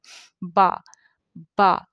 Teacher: तो हम दोनों होंठों को मिला के जब मुंह खोलते हैं तो बा की आवाज़ निकलती है। बा, बा, दोनों होंठों को मिला के जब इन्हें खोलेंगे तो बा अदा होगा